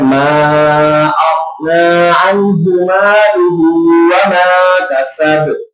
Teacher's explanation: ما کا جو مد ہے یہ بھی مد منفصل کے معنی میں آتی ہے، تو لہذا اس کو بھی لمبا کر کے پڑھیں گے